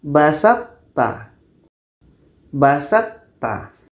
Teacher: Jadi nanti ketika sebut to ini, sifat itbaq yang ada pada to ini masih terbawa kepada ta